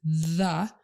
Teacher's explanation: So your tongue pushes hard against that surface with the D sound, d. With the voiced TH sound, your tongue doesn't push very hard, and it's between your upper and lower teeth down here. It's a very light contact.